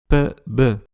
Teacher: ça consiste à complètement bloquer le flux d'air et à le relâcher brusquement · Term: occlusives